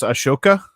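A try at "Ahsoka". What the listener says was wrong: It's Soka Tano. It's you don't pronounce the AH, I believe.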